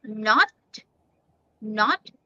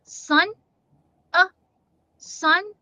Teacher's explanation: short o is o rounded but short u sound is uh uh it's the placing of your mouth it's not very rounded it's